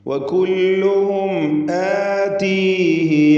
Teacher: സാക്കിൻ തമീമും ശേഷം ഹംസയും ഇൽഹാർ ഷഫവി മണിക്കാതെ വെളിവാക്കണം